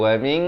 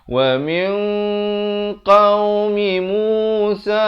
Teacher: Nun mati bertemu qaf. Hukumnya ikhfa hakiki.